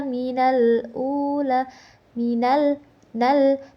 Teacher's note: Alif mati bertemu dengan huruf qamariah. Maka dibacanya jelas tidak samar. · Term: alif lam qamariyah